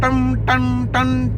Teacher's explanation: जसं घंटेचा टोल पडला तर नुसतं टन टन टन टच न तुम्ही उच्चार करता का, तर न हा अदृश्यात होतोच. अनुस्वार जो असतो हा न चा उच्चार करतो